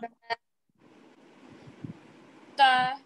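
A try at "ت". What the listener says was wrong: Again, you're making it ta. Don't this is a light letter and alif is also light. Ta. Ta.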